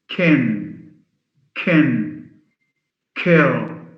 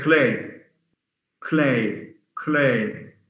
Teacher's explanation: if it occurs at the beginning and is followed by a vowel then it's aspirated but if it's followed by a consonant then it's unaspirated